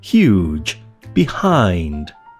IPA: hjuːdʒ